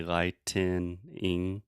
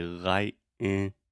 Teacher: The longer answer is lightning is just 2 syllables, and lightening, when I pronounce this slowly and articulate, you hear me say lightening, but when I pronounce it fast, I use a stop T and I say lightning, Mm-hmm.